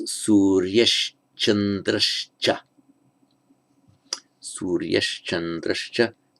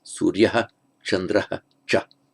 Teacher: So in both cases you get the Visarga followed by the consonant Ch. Being a Ch, the Visarga takes on the same point of articulation, comes out with the tongue in the same place, so it's where it becomes Suryesh Chandrashcha.